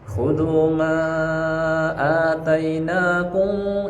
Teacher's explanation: ditahan mimnya, namanya ikhfa syafawi ya.